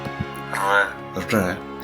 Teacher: there's an extended R, which is like a rolled R.